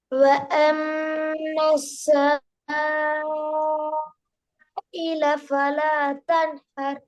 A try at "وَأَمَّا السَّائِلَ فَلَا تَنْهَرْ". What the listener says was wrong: நீங்க 1 செகண்ட் தான் நீட்டீங்க. சங்கிறது 1 செகண்ட் போதும். அப்படியா?